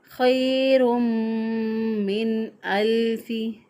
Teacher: तो इजहार जो है उसमें एक अलिफ के बराबर लंबा नहीं करते, नून साकिन को ज़ाहिर करके पढ़ते हैं, गुन्ना नहीं करते और ना ही एक अलिफ के बराबर लंबा करते हैं, बल्कि यहाँ पर नून साकिन की आवाज़ को ज़ाहिर करते हुए अदा करेंगे।